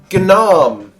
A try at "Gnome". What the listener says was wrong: The G is silent, darling.